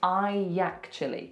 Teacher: So what we're going to put in the middle is we're going to put a Y sound.